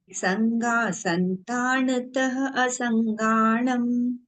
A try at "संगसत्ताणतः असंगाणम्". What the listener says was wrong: संगासत्ताण, संतान नहीं है, संगासत् संगसत्ताणतः असंगाणम्। संगा लिखा है, संगाई है, संगाम नहीं है, मतलब संगा संतान नहीं है, सै पे अंग नहीं है।